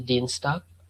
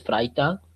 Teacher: the sound of G will be K, a bit like K whenever we use it at the last of the sentence